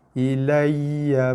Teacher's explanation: Lam jumpa ya ada bersabdu. So tekan pada ya. Ilayya. Jangan dibaca dengan ilayya.